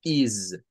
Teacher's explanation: con una s vibrante sonando como que fuese una Z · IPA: /ɪz/